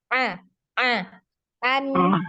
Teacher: huruf Ain ditenggorokkan bagian tengah